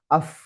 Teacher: pada saat sukun af hilang suara dia yang ada cuma angin. Nah, itu namanya sifat hams.